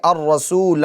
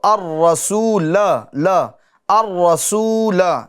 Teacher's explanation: تو وقف میں اس الف کو، زائد الف کو پڑھیں گے، ملا کر پڑھنے کی صورت میں نہیں پڑھیں گے، ٹھیک ہے۔ الرسول یہ وقف میں، اور ملا کر آگے والے کلمے سے پڑھنا ہو تو الرسول، الرسول، ٹھیک ہے۔